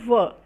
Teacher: o Van é uma consoante fricativa lábio dental vozeada